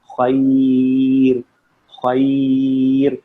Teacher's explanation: اس سے پہلے جو بھی ہو نہیں دیکھیے گا، کیونکہ اگر آپ قاعدے پہ جائیں گے تو پھر آپ بولیں گے جی اس سے پہلے تو فتح ہے تو را موٹی ہونی چاہیے. تو نہیں، را ساکن سے پہلے اگر یا ساکن ہو تو را باریک ہی ہوگی